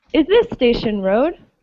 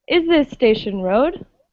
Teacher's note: I hear the tone going up on the road.